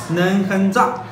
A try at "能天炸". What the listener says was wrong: 不 是 哼 ， 是 天 。 能 天 炸 。 能 天 炸 。 天 炸 。